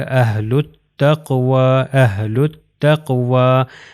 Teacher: اس میں بھی الف لام نہیں پڑھا جائے گا، یہ اہل التقوی، یہ لام جو ہے وہ تا سے مل جائے گا، ہو جائے گا اہل التقوی، اہل التقوی۔